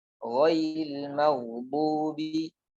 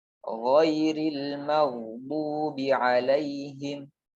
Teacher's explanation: Gha ini terucap dari ujung tenggorokan atau diistilahkan tenggorokan bagian atas yang paling dekat dengan lidah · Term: huruf ghain